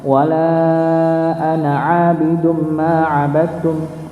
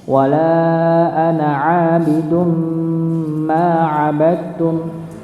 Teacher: Ya, ada huruf dal yang dia tanwin, dhammah tanwin ketemu dengan huruf mim maka didengungkan ya. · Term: idgham bi gunnah